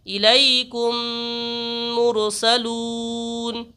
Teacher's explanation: اگر میم ساکن کے بعد دوسرا میم آ جائے تو میم کو میم سے ملائیں گے اور غنہ کر کے پڑھیں گے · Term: ادغام شفوی